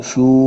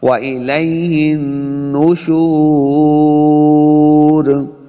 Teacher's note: وَإِلَيْهِن نُشُورٌ، نُشُور شین پیش واو شو، واو مد ہے، دونوں اپنے ہونٹ جو ہیں وہ گول کریں گے تو واو کا مخرج بھی صحیح ادا ہوگا